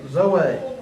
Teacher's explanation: the emphasis is on the last syllable